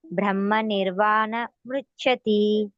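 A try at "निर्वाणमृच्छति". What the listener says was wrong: ಇದು ನಿರ್ವಾಣ ಅಂತ ಸ್ಪೇಸ್ ಬಿಡಬೇಡಿ ಅಲ್ಲಿ ನಿರ್ವಾಣಂ ರುಚ್ಚತಿ ಹೇಳಿ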